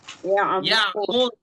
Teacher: Harful ain harus mengalir ya, nggak boleh ditahan.